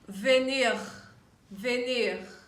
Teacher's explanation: the french r is thicker when you produce it you you feel the thick serious vibration from here and then you feel the sound coming out from